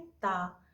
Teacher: जब आप बोलते हैं ता, तो ता आपका हो गया दंत